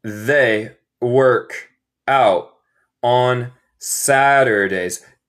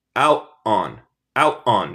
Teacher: yo voy a hacer una pausita, se llama un glottal stop, donde hay un poco de silencio, no hay sonido. Y este poco de silencio, donde yo para el sonido en mi garganta, es el té.